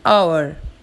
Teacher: Notice the word hour as H is silent here, so the sound starts with a vowel sound.